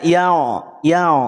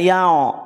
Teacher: ketika pangkal lidah tidak naik maka bunyi jadi tipis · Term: istifal